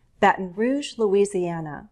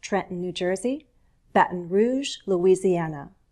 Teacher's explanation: notice how I use a glottal stop